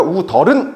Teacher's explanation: 어른 앞에 있는 시옷이 디귿으로 바뀌고 디귿을 위로 올려 주세요